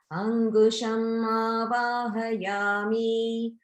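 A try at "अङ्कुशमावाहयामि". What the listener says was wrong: Here, just be a little bit careful about the pronunciation, like Ankusham ku. It's a K sound, ku. It sounded a little bit like gu. So just watch out for exchanging ka for ga and things like that. Ankusham.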